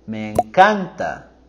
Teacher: So here we're going higher with our voice and intonation with me encanta.